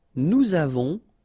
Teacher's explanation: final S not pronounced, and then we make this little link between the two